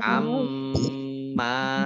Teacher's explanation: mim tasdid, dibaca gunnah atau mendengung, ya, ditahan 2 harokat. Amma, mim fathah alif matobi'i.